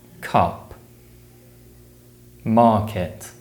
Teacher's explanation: the sound is produced by blocking and releasing air with the back of the tongue